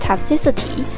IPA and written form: tɒkˈsɪs.ɪ.ti (toxicity)